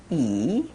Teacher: We'll start with the long E sound. So again, the mouth stretch of spreading the lips with a long E sound, E, and breathing and exhaling, E.